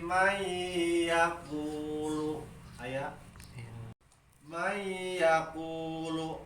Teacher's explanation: Idgham bigunnah eta sakur-sakur idgham anu make gunnah dengung kana irung